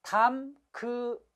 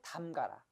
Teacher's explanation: 담그아라가 아니라 의가 탈락해 담가라가 되는 거예요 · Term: 의 탈락